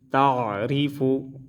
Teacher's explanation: را کو باریک پڑھیں گے کیونکہ اس کے نیچے زیر آیا ہے